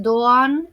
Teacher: la G suave de los turcos no se pronuncia y se estira el sonido de la vocal anterior